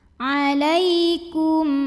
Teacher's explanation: Lai ada harfulin atau huruf lin karena ada ya sukun yang didahului baris fathah, maka kita bunyikan lembut atau lunak.